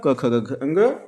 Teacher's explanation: क वर्ग में जितनी भी ध्वनियां आएंगी सारी कंठ के अंतर्गत आती है